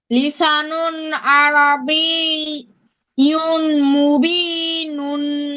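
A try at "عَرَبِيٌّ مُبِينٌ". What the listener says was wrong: ইউন না বাবা, এখানে ইউন পড়া যাবে না, বারবার বলছি, এখানে ইউন পড়া যাবে না, ইউম পড়তে হবে, ইউম।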